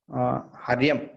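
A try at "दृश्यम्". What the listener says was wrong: It's not Haryam. It is not Ha. What is the letter? First letter? It is not Dakara plus Dakara plus Dru. It is Dru. Dru. I told before, Dakara plus Dru, it's written like this.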